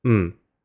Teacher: It's literally just a m sound with a low falling tone.